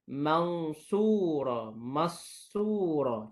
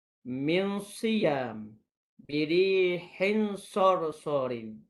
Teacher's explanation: Contohnya nun tu hilang, terus kepada huruf sad. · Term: idgham